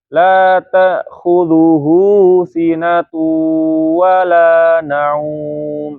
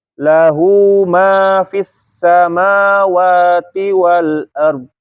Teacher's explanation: Jadi harus dipanjangkan hu-nya. Kalau nggak dipanjangkan jadi nggak jelas itu enggak ada hu atau enggak. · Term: hak domir